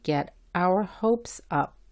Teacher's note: La O en our y la U en up se pronuncian como la A del español. La H se pronuncia como la G en gente, pero más suave.